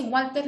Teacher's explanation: cuando pronuncio Walter, ese Walter, la W suena como una U